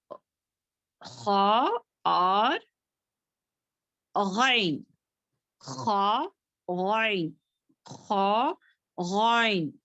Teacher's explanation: اب یہ جو ہے ادن الحلق سے نکلنے والے لیٹرز ہیں